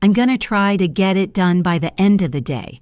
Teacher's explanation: End of becomes enda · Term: connected speech